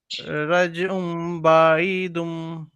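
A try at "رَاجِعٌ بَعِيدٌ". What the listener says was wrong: দুম না দুন না, রাজিউম বাঈদুন।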